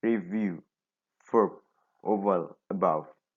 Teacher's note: It is voice sound because the vocal folds vibrate.